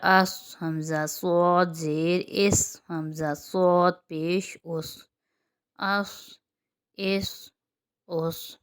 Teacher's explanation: صاد موٹا ہے اور وہ مستعلیہ میں سے بھی ہے، اس لیے اس میں موٹائی بھی آئے گی اور سیٹی بھی آئے گی۔ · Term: سیٹی والا حرف